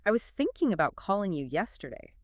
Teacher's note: Thinking, calling, yesterday. Those words naturally carry more stress.